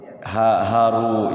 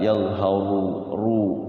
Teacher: Hukum ro-nya dibaca tebal, tafkhim, betul Pak Haji ya, tafkhim. Tafkhim itu tebal. Enggak boleh dibaca tipis.